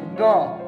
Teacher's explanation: અનુનાસિક, એટલે નાક અને ગળાની મદદથી બોલવામાં આવે છે.